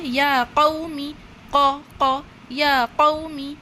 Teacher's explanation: اور یہ لیٹر قاف ہے، اسے موٹا پڑھیں گے